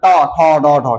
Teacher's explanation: জিহ্বাটা উল্টে গিয়ে তালুতে মারে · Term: মূর্ধন্য বর্ণ